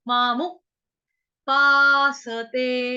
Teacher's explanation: अभी मामू, म आ मा, यहाँ पे दीर्घ स्वर है मा, उसके बाद मु, म छोटा उ